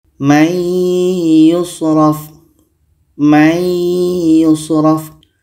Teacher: Maka nun mati ini kita masukkan ke ya dan kita dengungkan. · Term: idgham bi gunnah